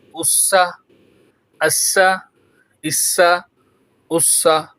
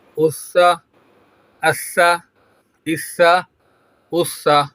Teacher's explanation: سین میں سیٹی بجتی ہے، سا میں سیٹی نہیں بجتی